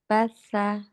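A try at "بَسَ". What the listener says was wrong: Jangan ditekan ya. Jangan ditekan. Basa.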